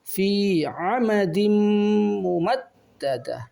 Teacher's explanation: maka membacanya dibaca dengan idgham biguna dengan ditahan 2 harakat